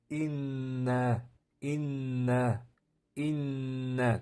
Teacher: N deb tursangiz havo qayerdan chiqadi? Dimoqdan chiqyapti. Yoki mimmading mimmading m deb turganingizda ikki soniya shunday deb tursangiz bu ham demoqdan chiqadi. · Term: idg'om